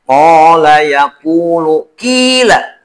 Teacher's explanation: Nah, itu teh semua disebut dengan mad asli atau mad tabi'i. Dibaca panjang, jangan lebih dari 2 harakat.